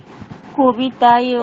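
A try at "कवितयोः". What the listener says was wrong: কবিতায়োহ, এই তো, কবিতায় হয়তো, এই তো বলে দিতে পারলে।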